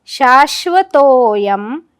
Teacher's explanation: शाश्वतोयम शावराघात, कारण शाच्या पुढे श्व हे जोडाक्षर.